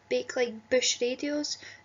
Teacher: It's quite a strong, plosive B sound